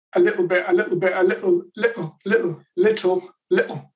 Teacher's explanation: it's a typical place where people might make a glottal stop certainly in british english